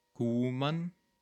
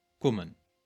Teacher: a long U sound, kuman, or a short O sound, kummen, to come